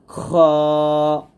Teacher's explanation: মোটা হবে গলার শেষ থেকে খ বলার সময় সতর্ক থাকবেন যেন আপনার ঠোঁটটা কোনভাবেই গোল না